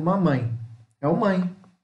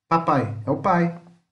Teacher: Mamãe é um ditongo nasal. Papai é um ditongo oral. Por quê? Mãe tem duas vogais na mesma sílaba.